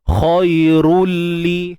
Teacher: Masuk tanwin ke dalam huruf lam. Kemudian masuk macam biasa, sempurna, bila gunnah, tanpa dengung. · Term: idgham bila gunnah